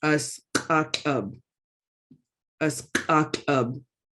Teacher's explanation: the Q is the back of the throat, so you're going to be making that harder sound.